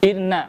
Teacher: Nah, di sini kaidah tahan suara, maka sempurnakan dibaca dan dibaca dengung selama 2 atau 3 harakat.